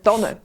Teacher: Ganz im Westen und im Osten sagt man eine Tanne mit einem kurzen N.